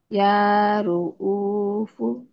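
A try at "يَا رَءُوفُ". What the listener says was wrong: Ya Ra'u. Bukan Ru'u ya.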